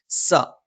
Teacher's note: നാവിന്റെ കൂർത്തറ്റത്തിന് മുകൾഭാഗം രണ്ടുവരി മുൻപല്ലുകൾക്കിടയിലായിട്ടും ചെറുതായി നാവിന്റെ അറ്റം താഴെ മുൻപല്ലിന്റെ പള്ളയിൽ സ്പർശിക്കുകയും ചെയ്യും